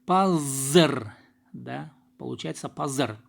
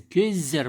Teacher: Обратите внимание, здесь глухой звук в корне слова пас озвончается